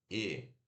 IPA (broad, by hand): e